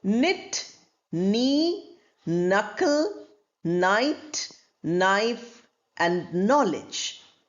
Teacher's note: All of them, the n sound is pronounced, the k sound is not pronounced.